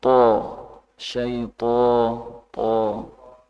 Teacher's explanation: th itu udaranya enggak ada yang terperangkap di mulut